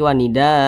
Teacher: Ini kita baca wanida, kita rubah sendiri wanida, jangan wanidaan, jangan, tapi wanida. A kita panjangkan 2 harokat atau kira-kira 2 ketukan, mad iwat. Nah, wanida.